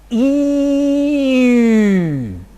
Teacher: cardinal number 9, a rounded front vowel